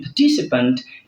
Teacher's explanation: In participant, you have the stress on TI